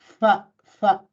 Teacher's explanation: the fa is with just with the lower lip against the top teeth